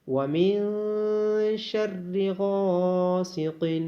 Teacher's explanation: غین اور الف کو موٹا پڑھا جائے گا اور غین کی آواز کو کھینچا جائے گا الف مدہ ہونے کی وجہ سے · قوف کو موٹا پڑھا جائے گا اور با پہ قلقلہ کیا جائے گا اور ذال کی آواز نرمی سے ادا کی جائے گی.